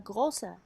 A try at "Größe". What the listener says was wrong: Yeah, be careful with the umlaut. Yeah, you have to flatten your lips a little bit.